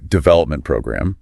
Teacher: The main stress goes on development, which seems to be the rule for these types of phrases. Yeah, usually the first word gets the emphasis in compound nouns.